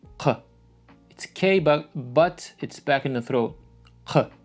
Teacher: voiceless uvular plosive. So it's like in Arabic, qaf, Q.